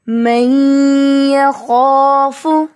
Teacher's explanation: جتنا غنہ کرتے ہوئے ہم ناک میں آواز کو ٹھہراتے ہیں اتنا ہی ہم یہاں پر ادغام کرتے ہوئے آواز کو ٹھہرائیں گے، یعنی 1 الف یا 2 کاؤنٹس